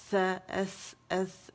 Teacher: جب زبان کی نوک سامنے کے دو دانت کے کناروں سے لگے گی نرمی کے ساتھ سا ایس ایس ادا ہوگا, ٹھیک ہے. اسے سین یا سا کی آواز نہیں آئے گی, سیٹی نہیں ہے اس کے اندر.